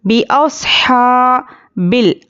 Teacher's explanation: हा खड़ा ज़बर हा, और खड़ा ज़बर बराबर है हुर्फ मद्दा के, एक अलिफ के बराबर खींच कर पढ़ेंगे